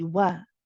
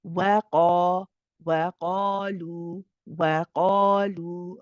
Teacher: However, sometimes the mistake that is made is the wow is made heavy too. But it's not supposed to be heavy, it's supposed to be light.